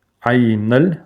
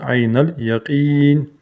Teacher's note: Лам соединяем с нун.